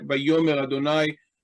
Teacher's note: Note that the aleph becomes silent. We know it's silent because it doesn't have any vowel pointing here.